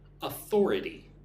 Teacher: Put the emphasis on the second syllable. One, two. Thor.